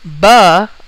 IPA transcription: bʌ